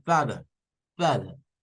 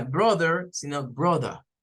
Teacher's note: Tiene que ver con el sonido de la R al final de las palabras. Es decir, las palabras que terminan con vocal y R al final, los británicos en su mayoría acostumbran a no pronunciar la R. Por ejemplo, si nosotros hemos escuchado toda la vida father con father, eso es más inglés rótico. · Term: inglés no rótico